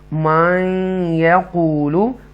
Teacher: तो नेक्स्ट है फामिनन्नासी मन यक़ूलु, यहाँ पर इदगाम करेंगे और फ़ियार मालूम में से या आ रहा है नून साकिना के बाद, तो गुना करेंगे